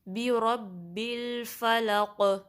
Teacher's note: قوف کو جب ہم ساکن کریں گے تو اس پہ قلقلہ ہوگا، یعنی کہ جو آواز ہے وہ پلٹ کر واپس آئے گی